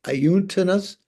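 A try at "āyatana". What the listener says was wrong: No, ayatana. Ayatana. It's they're all the vowels are a. Ayatana.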